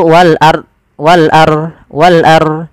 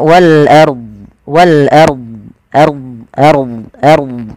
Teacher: kalau kita waqaf pada lafal ini, pada lafal wal ard, itu harus dibaca do-nya.